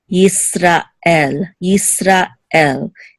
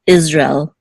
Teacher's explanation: It's almost as if it's two separate words, Yisra and El